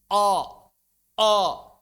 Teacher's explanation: mengubah suaranya menjadi hamzah tebal